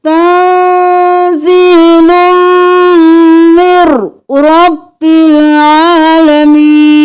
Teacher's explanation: तंजीलुम मिर करना है, मिन नहीं करना, मिन को रॉ के साथ मिलाना है